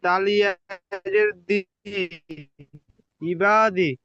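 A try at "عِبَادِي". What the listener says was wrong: টান দেন, কোথায় টান হবে টান দিয়ে পড়েন। তালিয়াজের দি টান হবে। যেখানে টান রয়েছে সেখানে টান দিয়ে পড়েন।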